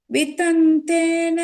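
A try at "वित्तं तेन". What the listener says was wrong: வித்தம் சொல்லிடு, அது வித்தன், அது மட்டும் கொஞ்சம் பாத்துங்க.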